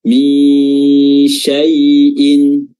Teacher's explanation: sifat tafasyi, sifat yang membuat udara dan nafas tersebar di permukaan lidah